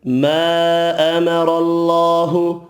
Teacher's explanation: را زبر کی وجہ سے پر پڑھنا ہے. اللہ کا نام والا لام بھی زبر کی وجہ سے پر پڑھیں گے